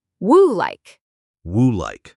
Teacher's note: Would like. The D in would is soft. It almost disappears into the L in like.